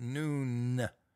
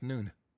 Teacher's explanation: in his day, in that area, the final N in that name was slender. In other words, it wasn't Noone, it was more like Noone.